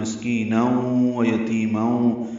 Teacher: مسکینن میں سین ساکن ہے، اس پہ ہمس ہے، کاف باریک ہے، کی یا مدہ ہے، تنوین کے بعد واو آنے کی وجہ سے ادغام ناقص مع الغنہ